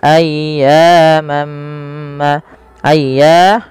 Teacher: Kemudian melafal ayyamam, ayya di sini panjangkan suara ya-nya sepanjang 2 harakat karena ia mad tabi'i dan tekan ya-nya dulu